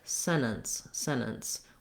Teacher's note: native speakers say this word is more like sentence sentence where they don't do any t at all then they're not really stopping the air